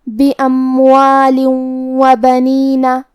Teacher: واو حروف الادغام میں سے ہے تو ہم یہ حکم کو غنہ اور تشدید کے ساتھ ادا کریں گے